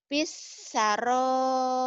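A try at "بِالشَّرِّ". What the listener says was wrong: Kurang nyamber. R-nya 2. Dua-dua nyamber.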